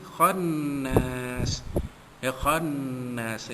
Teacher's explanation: wajibul gunnah kerana nun sabdu dengung pada kadar 2 harakat, an khannas jadi kita baca ma'arid disukun 2, 4 atau 6 harakat panjangnya.